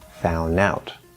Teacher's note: you can drop the D and say found out